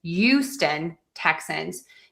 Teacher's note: some people will drop the H.